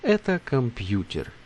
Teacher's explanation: it's an affirmative sentence, so you don't have to raise your intonation. Just это компьютер. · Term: Falling intonation